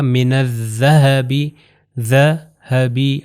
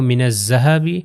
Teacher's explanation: اوپر اور نیچے والے دانتوں میں زبان تھوڑی سی باہر آئے گی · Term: ذال